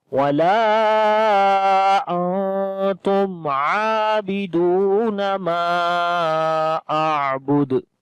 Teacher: عابدون ما اعبد، میم کو بھی لمبا کریں گے، یہاں پر مد منفصل آ گئی، عین کے اندر توسط کریں گے اور دال کے اوپر قلقلہ. تو پڑھیں گے وَلَا أَنْتُمْ عَابِدُونَ مَا أَعْبُدُ لَكُمْ دِينُكُمْ وَلِيَ دِينِ.